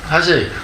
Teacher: He doesn't say the first letter clearly. Instead, he says it very lightly, so much that it almost disappears. And instead of 사실, it almost sounds like 아실.